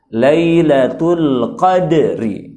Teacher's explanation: Di sini ada lagi-lagi dal sakinah muqalqalah, sukun yang qalqalah yang dibaca mantul